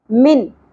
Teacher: نون کی آواز کو چھپانا نہیں ہے بلکہ کلیئر کر کے پڑھنا ہے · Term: اظہار